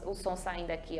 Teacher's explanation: o r entre vogais ele tem o som fraco